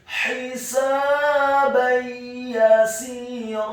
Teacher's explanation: Kata yasira, huruf ya-nya dibaca tipis, fathah 1 harokat. Huruf sin-nya dibaca kasrah 2 harokat karena setelahnya ada huruf ya sukun. Dan di akhir ayat huruf ra-nya dibaca tafkhim, tebal, fathah 2 harokat karena setelahnya ada alif. · maka hukum bacaannya adalah memasukkan dengan dengung idgham bil gunnah